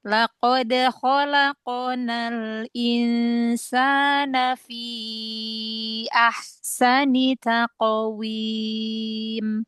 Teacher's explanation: Eh qofnya ditebalkan lagi ee qalqalahnya.